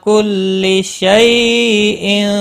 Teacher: یالین ہے، تھوڑا نرمی کے ساتھ کھینچ کر ادا کریں گے